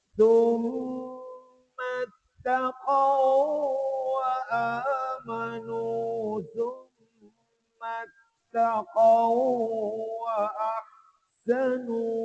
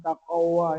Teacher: jadi kalau kita baca mesti ada idgham memasukkan waw itu kepada waw yang kedua